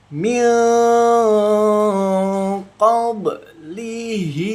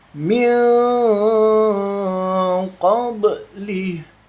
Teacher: Yang disamarkannya itu yang nun sukunnya disamarkan membacanya kemudian didengungkan tipis. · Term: hukum bacaan ikfa